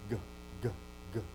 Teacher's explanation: the back of the throat is closed at the soft palate